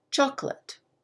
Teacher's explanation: the emphasis the stress is on chocolate the first syllable listen to what happens to those four letters late chocolate really